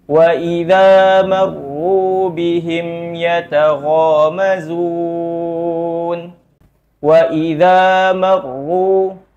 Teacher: pada kalimat marru ini adalah contoh huruf ro yang tebal ketika diucapkan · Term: ra yang tebal